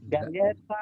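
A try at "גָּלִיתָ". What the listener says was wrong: No. No, not Galeta, all right? It should be like that. Galitha. Galitha. Okay, it should be long I. Again, Galitha. All right, Galitha.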